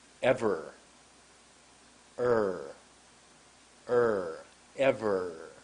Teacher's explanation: my tongue moved to the back of my mouth